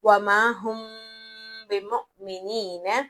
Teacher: वमा हुमिनीन यहां पर हुम की मीम के बाद बा आ रहा है तो हम यहां पर गुनगुनाहट की आवाज करेंगे यानी इफा करेंगे। मीम को नाक में छुपा देंगे · ہم یہاں پر گنگناہٹ کی آواز کریں گے یعنی اخفا کریں گے، میم کو ناک میں چھپا دیں گے